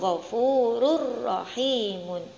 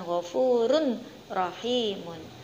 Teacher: tanwin harus dimasukkan ke dalam huruf ro, yaitu ghafurur rahimun, bukan ghafurun rahimun